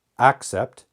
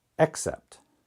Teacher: the first vowel sound here is ah the first vowel sound here is e